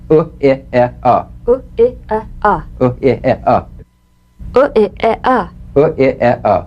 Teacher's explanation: These sounds are all short, staccato, grunt-like sounds. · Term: neutral sounds